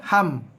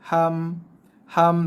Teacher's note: Dia kata habis mim kan tutup mulut. Betul, mim tutup mulut, makhrajnya pertemuan antara dua bibir bacaan mim.